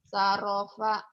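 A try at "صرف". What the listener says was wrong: Azoma soropa, bukan saropa. Aduh, aduh, aduh, aduh, aduh. Sorofa.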